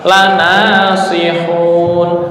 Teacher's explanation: Cuma lidahnya naik ke atas atau yang disebut dengan isti'la.